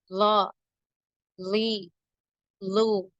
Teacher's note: நாவின் நுனி மேல் நடுப்பற்களின் ஈரில் இணையும் போது உண்டாகும்.